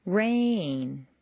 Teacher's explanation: Make rain very musical and put it on two notes. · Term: new information